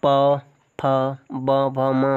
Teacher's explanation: दोनों ओठों से प फ ब भ म होता है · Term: ओष्ठ